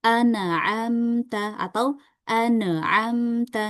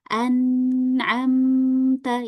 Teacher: Nah, ee ketika membaca huruf nun dan mim ini agar enggak mantul ya seperti tadi kita harus alirkan ya. Karena huruf nun dan mim ini dia punya sifat bainiah atau mengalir sedikit